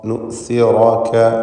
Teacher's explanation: നുസിറക, റാഇന് മാത്രമാണ് തഫ്ഖീം. ശേഷമുള്ള കാഫ് തർക്കീഖാണ്, ഇസ്തിഫാലിൻ്റെ ഹർഫാണ്. അപ്പോൾ തഫ്ഖീമിൻ്റെ ഹർഫ് ഉച്ചരിക്കുമ്പോൾ അതിൻ്റെ മുമ്പിലും ശേഷവുമുള്ള അക്ഷരങ്ങൾക്ക് തർക്കീഖാണെങ്കിൽ അവയിൽ തഫ്ഖീം വരുന്നത് സൂക്ഷിക്കണം.